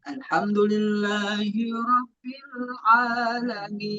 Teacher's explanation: Iya, huruf ain ditenggorokan. Tapi ee ada beberapa yang a a tuh seolah-olah di hidung a alamin.